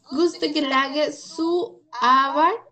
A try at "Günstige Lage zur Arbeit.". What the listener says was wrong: Ok, trata de pronunciar la R un poquito más fuerte, sur, ¿no?